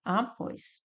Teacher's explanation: Nós temos como a sílaba mais forte o pós